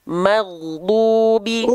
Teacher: huruf Gin itu dilafalkan dari tenggorokan paling atas dia mengalir suaranya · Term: ghain sukun